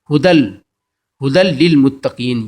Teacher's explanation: ھدل، ھدل للمتقین، یہ یرملون پڑھا تھا نا، یرملون میں لام بھی آتا ہے، جب لام آئے گا تو یہ لام جو ہے یہ دال پر جو ہے دو زبر، اس سے غنہ نہیں ہوگا بلکہ دال جو ہے لام سے مل جائے گا۔ ھدل، اور لام پہ جو ہے شد ہے، اس سے ہی مل جائے گا۔